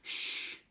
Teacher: your tongue is staying very close to the top of the mouth and forcing air out along the along the narrow space across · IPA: /ʃ/